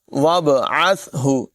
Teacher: با میں قلقلہ کریں گے، آواز خوب ظاہر کریں گے اور عین کی آواز نمایاں کریں گے، وابعث، سا میں سیٹی